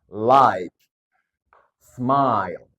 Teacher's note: ada suara A dan I maka digabung jadinya I